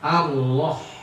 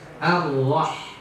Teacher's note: H itu juga huruf hams. Ada aliran. Ya. Ada aliran nafas ya. Allah. Nah, jangan huruf H di situ dia tipis, bukan tebal ya.